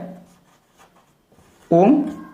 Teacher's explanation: ओम इसका समय कितना लगता है तीन मात्रा का समय लगता है ओम इसका समय ती गुना है तो जैसे ये एक एक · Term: प्लुत